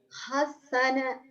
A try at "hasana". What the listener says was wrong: Nggak ada tasdid. Hasana, gitu, datar.